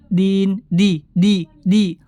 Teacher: ujung lidah menempel ke tempat tumbuh gigi atas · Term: huruf Dal